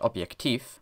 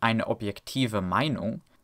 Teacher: as soon as the word takes adjective endings, as in eine objektive Meinung, that f becomes a v.